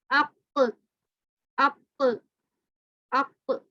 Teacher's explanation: قاف موٹا بڑا جا رہا ہے اور جو اس میں آواز نکل رہی ہے وہ اوپر کی جانب سے نکل رہی ہے، اوپر کی طرف آواز اٹھ رہی ہے.